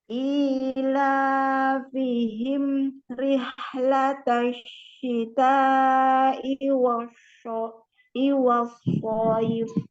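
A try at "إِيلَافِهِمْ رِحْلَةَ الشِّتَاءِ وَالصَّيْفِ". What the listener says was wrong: Nah, latihan so ya, so. Jadi jangan tengah lidahnya yang naik tapi belakang lidahnya ya. So, bukan show. Beda ya? Beda enggak bunyinya? Show dengan so ya. Jadi yang naik itu naik ke langit-langit itu bukan tengah lidah tapi lidah bagian belakang ya.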